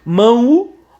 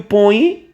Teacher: Então quando lê mão, o U aparece. E o põe, o I aparece aí. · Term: semivogal